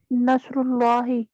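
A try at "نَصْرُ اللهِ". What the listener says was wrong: नसरुल्लाही, और पेश लाना है, नॉर्मल एंडिंग लानी है। जब पीछे से कुछ आएगा तो फिर वो जबर में चेंज करेगा, पीछे से कोई आएगा तो जेर में चेंज करेगा।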